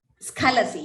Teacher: Skhalasi, Skha, the Kha should be Mahaprana, it should be heard clearly.